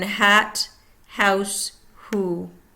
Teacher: unvoiced, sound, creating friction in the glottal area.